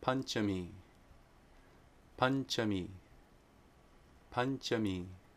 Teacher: If anusvāra precedes a palatal sound it's ña, the palatal nasal sound.